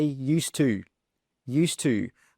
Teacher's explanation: We don't pronounce that d sound. We drop it.